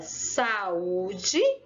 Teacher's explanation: Porque eu demorei mais a falar aquela palavrinha, saúde. Então, a sílaba tônica de saúde é u. Por quê? Porque eu me demorei mais nessa palavrinha, certo?